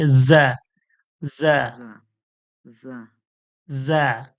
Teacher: র, জা, যা, দুটো জা, দাঁত একই সঙ্গে চিপবে, ওর মাঝখানে দাঁতটা লাগবে, দুটো দাঁতের মাঝখান থেকে হাওয়াটা হালকা ভাইব্রেটের মতো যাবে। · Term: অন্তস্থ জা